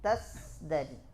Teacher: Berubahnya jahar menjadi hams pada zai.